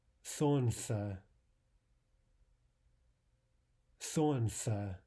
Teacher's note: The L there is not normally pronounced.